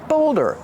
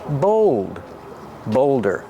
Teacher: Use a long O like cold and told.